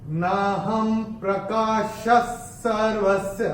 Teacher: विसर्ग के बाद अगर श, श या स आता है तो विसर्ग का उच्चारण आधा श, श या स होता है। तो यहाँ पे चूंकि स आ रहा है तो ये विसर्ग का उच्चारण स होगा, और ये हम अपनी किताब में विसर्ग को स्ट्राइक ऑफ करके यहाँ पे लिख के रख सकते हैं।